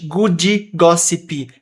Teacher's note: Good gossip, ambos, o D quanto o P, a gente não está falando eles inteiramente.